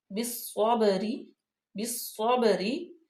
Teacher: صاد جو ہے وہ حروف شمسیہ میں سے ہے، اس لیے یہ الف لام نہیں پڑھا جائے گا بلکہ ڈائریکٹ صاد میں ملا دیں گے